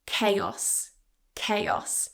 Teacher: CH is usually a ch sound, but here it's a k